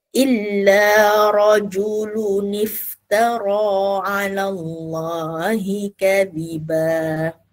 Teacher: Jadi yang tanwin rajulu tu dia akan tukar kepada nun kecil kan.